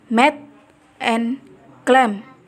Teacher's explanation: Contohnya pada suara Saluran oral diblokir dengan menutup bibir atau bilabial.